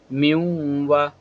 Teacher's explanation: کیونکہ نون ساکن کے بعد واو آ گیا ہے، تو اسی وجہ سے یہاں پہ ادغامی یرملون مع الگنہ کا قاعدہ ہو رہا ہے۔ میم، نون، یا زیر می، یا واو زبر یو، می یو،